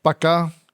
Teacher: that cutting of syllables is often associated with rural Mexicans